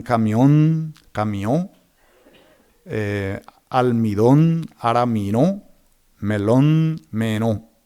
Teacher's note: Así tenemos el paso de corral a corá, en guaraní, Josefa a Josepa, almohada a arambojá, entre otros. En palabras del español terminadas en N, el guaraní redujo el segmento final nasalizando la última vocal